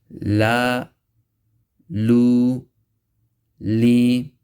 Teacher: Next letter, lam, with the tip of the tongue touching the gums of the teeth, or you can say the inner gums of the teeth, which extends from the dawahik of one side to the other.